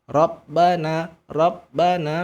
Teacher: ba tidak boleh berubah jadi huruf P